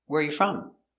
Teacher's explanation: Intonation goes down at the end.